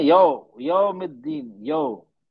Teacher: हम होठों को गोल नहीं करते हैं पूरी तरह से, तो हमारी आवाज निकलती है यो, ओ की आवाज निकल रही है।